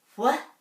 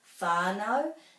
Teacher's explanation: it's much more commonly pronounced as fi